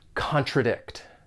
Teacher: has 3 syllables and the stress is on that third syllable